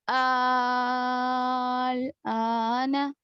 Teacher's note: आल पढ़ेंगे, क्योंकि मद्दा के साथ खींचना है आपको। यहाँ पर जबर नहीं है बल्कि खड़ा जबर, तो खड़ा जबर के साथ आपको खींचना है बाजू वाला हर्फ। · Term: मद्द लाजिम